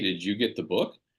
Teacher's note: if you're going to ask a question that has yes or no as the answer like hey did you get the book you're going to rise that intonation